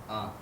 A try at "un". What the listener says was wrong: I don't hear the N. Yeah, you have to put both of those letters together.